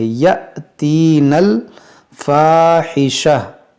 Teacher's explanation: یہ حمزہ ساکنہ ہے، اس کو ہم جھٹکا دے کر پڑھیں گے